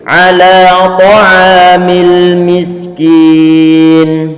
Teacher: Cukup nanti ditarik suara lamnya, dialirkan sedikit